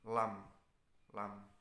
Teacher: bunyi ini keluar dari tepi lidah kiri maupun kanan sehingga penghabisan ujung lidah serta menempati dengan langit-langit mulut atas